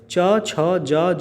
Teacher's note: व्यंजनों का उच्चारण तालु से होता है, और इस व्यंजन को तालव्य व्यंजन कहते हैं